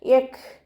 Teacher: പല്ല് ചുണ്ടിൽ തട്ടാത്ത രൂപത്തിൽ വെക്കുക. കാഫ് സുക്കൂനാവുമ്പോൾ കുറച്ച് എയർ പാസ് ചെയ്യണ സൗണ്ട് കൊടുക്കുക